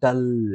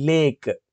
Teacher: డల్ అని పలికేటప్పుడు మన tongue అనేటువంటిది రోల్ అవుతుంది ఓకే కొంత కర్లీగా అవుతుంది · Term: డార్క్